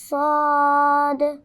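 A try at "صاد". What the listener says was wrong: आखिर में दाल भी है ना हम इसके नाम में तो दाल भी सुनाई देना चाहिए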